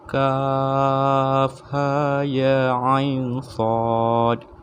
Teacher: Ha dengan ya tu panjang dia hanya sekadar 2 harakat.